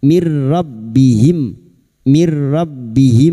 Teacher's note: masuk pada huruf ro tanpa mendengung tanpa ditahan lama-lama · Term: idgam bila guna